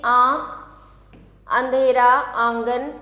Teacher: जिन वर्णों का उच्चारण नाक से किया जाता है उन्हें अनुनासिक कहते हैं, जैसे आँख, अंधेरा, आंगन आदि।